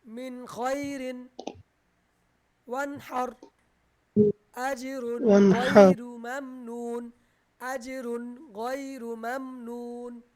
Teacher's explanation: নুন সাকিন বা তানবিনকে কোনো গুণ্য করা যাবে না, স্পষ্ট করে পড়তে হবে। গুণ্য ছাড়া ক্লিয়ার করে স্পষ্ট করে পড়তে হবে। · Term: ইজহারের হরফ